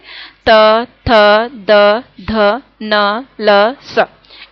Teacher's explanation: इन वर्णों को हम दांतों की सहायता से इनका उच्चारण करते हैं। इनको बोलते समय हमारी जीभ दांतों से टकराती है